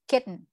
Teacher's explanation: If letter T is followed by a letter N, it has to be pronounced with a stop. Parang nag-suppressed yung sound at the end. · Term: glottal T